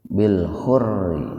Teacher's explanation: Jadi huruf ba nya dipantulkan secara ringan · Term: Qolqolah Sugro